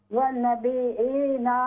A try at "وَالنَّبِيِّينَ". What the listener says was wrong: یہ نون مشدد ہے، اس میں غنہ ہے، غنہ کریں، والنبیین، سن لیں پلیز، والنبیین، وَأَن نہیں ہے یہ، واو نون زبر ون، والنبیین،